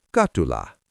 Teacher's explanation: In the middle of a word, a single T often softens into a D.